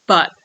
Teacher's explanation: So the T is glottalized at the end of the word.